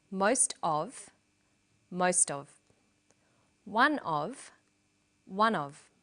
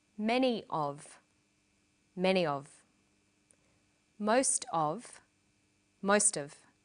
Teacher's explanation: notice that of in these phrases is unstressed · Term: linked together